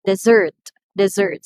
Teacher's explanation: So the second syllable receives the stress because we are pertaining to the verb.